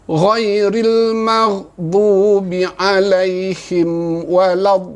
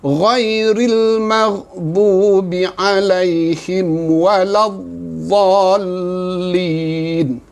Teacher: hukumnya mad lazim kalimi musaqqal hendaklah dibaca dengan 6 harakat